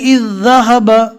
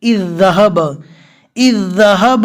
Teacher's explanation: یہ جو جزم والی ذال ہے اس کو نہیں پڑھا جائے گا، یہ جو حمزہ ہے اس کے زیر کو ڈائریکٹ ذال کے ساتھ ملا دیں گے